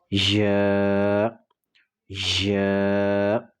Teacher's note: اس کے بعد اگلا ورڈ ہے یا۔ زبان کا درمیان جب اوپر تالو کے درمیانی حصے سے لگے گا تو اس سے ادا ہوگا یا۔ زبان کا درمیانی حصہ اوپر کے تالو کے درمیانی حصے سے لگے گا یا۔